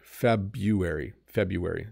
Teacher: there's an r in here and some people do say it but most people don't